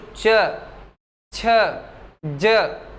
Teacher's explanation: जिन वर्णों को या जिन ध्वनियों को बोलते समय जीभ जाकर के ऊपर तालु से चिपक जाए, च को आप बोल कर देखिए, च जब आप बोलते हैं तो च छ ज, जीभ उठेगी और ऊपर तालु से जाकर चिपक जाएगी। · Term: तालव्य